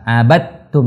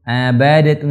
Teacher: ketika dal ketemu dengan ta, ini teman-teman itu dianggap satu huruf. Jadi melebur menjadi huruf ta. Abattum, jangan abadatum salah. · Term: idgham